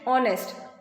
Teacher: here h is not pronounced H is silent and we pronounce it honest